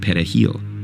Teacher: Dominicans pronounce it perejil with a trilled Spanish R.